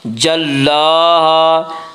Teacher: لام کے اوپر کھڑا زبر ہے، کھڑا زبر کو ایک الف کے برابر کھینچ کر پڑھیں گے۔